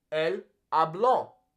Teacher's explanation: In this example, yo hablo, the emphasis falls on that first A.